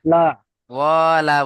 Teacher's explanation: ওয়াও টান দিলে হবে না, ওয়াও জেবার ওয়া হারাকাত আছে।